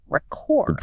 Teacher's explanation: That first syllable just gets quick and reduced. It's almost a schwa sound. All the effort goes into chord.